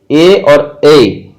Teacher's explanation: कंठ और तालु दोनों का यूज किया जाता है, इसलिए कंठ तालव्य बोलेंगे